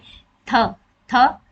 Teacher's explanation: थ हमारी जीभ दांतों के बीच में आती है।